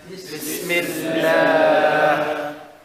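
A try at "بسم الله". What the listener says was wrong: I don't know where I hear the ha. Look at the sin and the ha.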